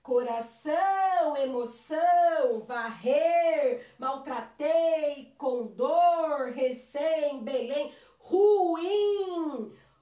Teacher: sempre a minha sílaba mais forte é a última